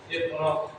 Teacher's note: Alasannya huruf qalqalah qaf berada di tengah kalimat. Cara bacanya dipadamkan ringan. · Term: qalqalah sughra